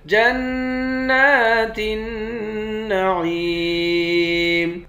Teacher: جیم کو نون مشدد کے ساتھ ملا کر یہاں غنہ کریں گے، نون پر کھڑا زبر ہے، ایک الف کے مقدار کھینچ کر پڑھیں گے۔